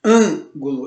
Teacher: Esse an é a sílaba mais forte e então ela está na antepenúltima sílaba, então ela é uma proparoxítona.